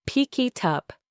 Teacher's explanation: The K sound at the end of pick connects to the I in it, and the T sound in it connects to the U in up. So what you actually hear is something that sounds like one long, smooth word, pick it up.